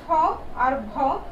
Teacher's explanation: ফ আর ভ, বাতাস জোরে বেশি লাগে বলে এগুলোর নাম কি? মহাপ্রাণ